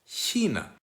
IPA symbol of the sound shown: ç